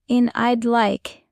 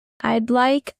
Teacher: In I'd like, the D is very soft, almost disappearing.